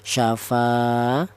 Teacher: Jadi fa dibaca mad thobi'i alasannya ada alif yang didahului huruf yang berharakat fathah. Panjangnya mad thai tadi satu alif sama dengan dua harakat atau dua ketukan